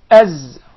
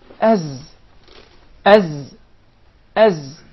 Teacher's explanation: And there is actually a whistling sound. As. So the Zay comes from the tip of the tongue and the palates of the two front top incisors at a point just above the two front lower incisors.